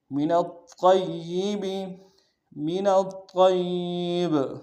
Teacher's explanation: وقف کرتے ہوئے با کو قلقلہ کریں گے